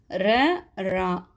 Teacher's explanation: நாவின் நுனி மேல் அன்னத்தின் முதல் பகுதியை தொட்டு வருடுவதால் ரகரம் தோன்றுகிறது. இஃது இடையின எழுத்து என்பதால் இதனை இடையின ரகரம் அப்படின்னு சொல்கிறாங்க.